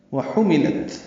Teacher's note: واو ہونٹوں کی نا تمام گلائی سے کریں گے، ہا وسط حلق سے ادا کریں گے، میم لام جلدی پڑھیں گے۔